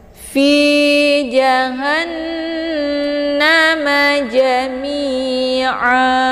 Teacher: Cara bacanya hanya dimasukkan ke dalam huruf nun dengan cara ditekan, kemudian ditahan lebih kurang 2 harokat atau 2 kali ketukan. Hukum bacaan ghunnah musyaddadah didengungkan.